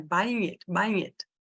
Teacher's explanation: Esse G do ING sempre é mudo, então ele não existe na oralidade.